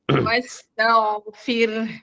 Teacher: Jadi ta tipis, ghain tebal